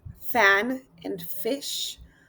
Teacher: Teeth and lips are the labial dental. Those sounds are made with the bottom lip touching the upper teeth